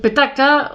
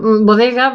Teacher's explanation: nosotros tenemos petacas, que son PTK, sorda, bodega, DG, que son sonoras